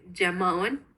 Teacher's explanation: ella lo pronuncia como una oclusiva palatal sonora